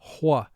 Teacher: Some people pronounce WH with a slight H sound in front, hwa, but most people now only use the W sound when they are pronouncing a word with the WH team.